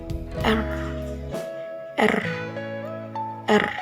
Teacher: Cara pembentukannya itu ujung lidah bergetar cepat di di bagian atas gusi. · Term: huruf R